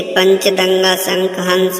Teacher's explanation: इनके ऊपर चंद्र बिंदु लगाया जाता है, जैसे 5, सांप, आंख, दांत, हंसना आदि। अनुस्वर के उदाहरण में सांस केवल नाक से निकलती है